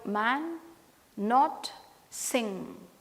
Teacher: all these sounds are voiced because all these sounds are nasal